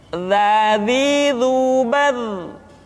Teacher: huruf dha diucapkan dengan menyentuhkan ujung lidah dengan dinding dua gigi seri bagian atas seperti kita mengucapkan huruf tha.